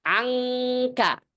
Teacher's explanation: Yang keluar dari khaysyum itu bukan nun dan mim, tapi namanya nun mukhfah, nun yang diikhfakan.